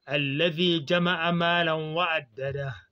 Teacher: On a écrit addadahu, mais on va dire addada. On va remplacer le hu par un soukoun.